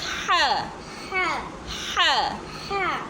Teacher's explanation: ح ح حلق کے درمیان سے ادا ہوتا ہے